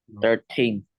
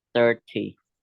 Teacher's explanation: In 13, the stress is on the second syllable. And in 30, the stress is on the first syllable.